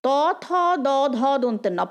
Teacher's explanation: প্রত্যেকটাতে দাঁতের আমাদের স্পর্শ হচ্ছে জিভে, জিভ এসে দাঁতের ঠিক পেছন দিকটা স্পর্শ করছে। ত থ দ ধ দন্তের ন, বা মানে দাঁতের সামনে তো জিভ আসতে পারে না, জিভের ভেতরের অংশটা দাঁতের ভেতরের অংশকে স্পর্শ করছে, জিভের সামনের অংশটা দাঁতের ভেতরের অংশকে স্পর্শ করছে। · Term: দন্তবর্ণ